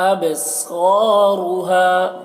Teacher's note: वाजिफ़ा, यहाँ पर भी गोलता है, क़ुलूबुन यौमइज़िन वाजिफ़ा अबसारुहा ख़ाशिआ, अब, बा में कलकला, सौद को मोटा करके , अबसारुहा, रॉ को भी मोटा करके, हा, देखिए ये हा